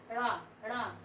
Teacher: को तालू से छूकर झटके से हट जाए ड़ ड़ जीभ ऊपर छू रही है तालू तो उसे क्या